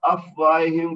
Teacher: فا جو ہے ساکن ہے اور یہ حروف ہمس میں سے ہے تو فا ساکن کا ہمس ہوگا۔ واو کے بعد الف ہے جو کہ الف مد بنے گا، تو یہ اس کو دو حرکت تک کھینچ کر پڑھیں گے۔